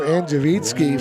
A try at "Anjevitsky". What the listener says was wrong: You don't pronounce the V.